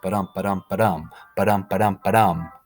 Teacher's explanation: the first syllable of each line is not accented, and the second syllable is accented. So, unstressed, stressed, unstressed, stressed, ba-dum, ba-dum, ba-dum, ba-dum, ba-dum, ba-dum. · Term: iambic pentameter